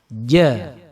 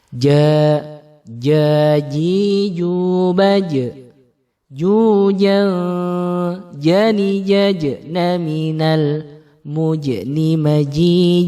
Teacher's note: Jadi kalau ja itu tebal dan syiddah, tidak keluar nafas. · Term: huruf jim